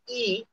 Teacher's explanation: ई तो जीभ का अगला भाग प्रभावित होता है, थोड़ा सा टाइट होता है। यानी कि छोटी ई जो है वो अग्र स्वर कहलाएगी, और बड़ी ई भी अग्र स्वर कहलाती है।